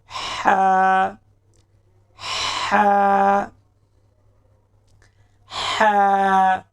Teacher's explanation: इसकी आवाज गले के दरमियान से निकलेगी।